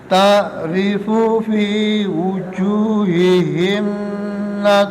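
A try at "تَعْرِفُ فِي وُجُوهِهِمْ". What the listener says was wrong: Loh, himipun, Mbak. Himim boten pareng. Ta'rifu fi wujuhihim lentur tapi boten didengungaken, boten ditahan. Wujuhihim lah ngoten.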